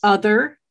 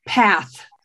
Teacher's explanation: the difference between a voiced TH, yes, like other, yes, and a non-voiced TH, like say path.